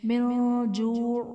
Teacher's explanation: من جوع میں نون ساکن کے بعد حرف اخفا میں سے جیم ہے تو یہاں پر ہم اخفا کا غنہ کریں گے